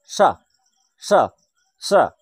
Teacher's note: কারণ এটি উচ্চারণের সময় আমাদের যখন উচ্চারণের শ্বাসবায়ু বেরিয়ে আসছে, যখন ভাষাটি বেরিয়ে আসছে, শব্দটি বেরিয়ে আসছে, তখন এই উচ্চারণের সময় জীব উপরের যে পাটির দাঁত রয়েছে, সেই দাঁতে স্পর্শ করে। সেই দাঁতে স্পর্শ করে বলেই এই স্বর নাম হচ্ছে দন্তস।